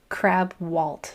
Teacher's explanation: I'm trying to say k at the front instead of g.